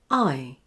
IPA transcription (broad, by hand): aɪ